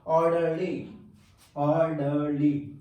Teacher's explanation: ये 3 syllabic word है, LY से खत्म हो रहा है, तो स्ट्रेस फर्स्ट वाले सिलेबल पर आएगा